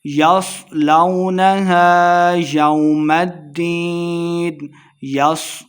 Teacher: یس، سواد کو موٹا پڑھیں گے